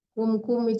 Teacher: jangan ditahan, jangan berdengung